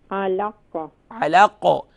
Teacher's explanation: آواز لوٹتی ہوئی واپس آئے، جسے کہتے ہیں ایکو کرنا، یعنی کہ اس میں آواز لوٹتی ہوئی محسوس ہوتی ہے۔ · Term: قلقلہ